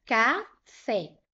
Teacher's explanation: a sílaba mais forte aqui nessa palavra é a sílaba fé. Se você parar aqui, vai ficar café. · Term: sílaba tônica